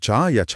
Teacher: जीभ ऊपर उठकर तालू को छूती है और हवा का रास्ता पूरी तरह रोक देती है।